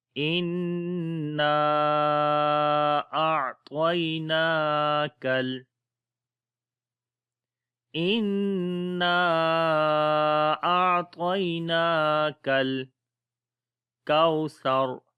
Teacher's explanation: کوثر، تو یہاں پر حمزہ کو نون کے ساتھ ملائیں گے، ان نون کے اوپر شد ہے، غنہ کریں گے، آواز کو ناک میں لے کے جائیں گے، لمبا بھی کریں گے ان، اور پھر نون کو لمبا کریں گے کیونکہ اس کے بعد الف مدہ ہے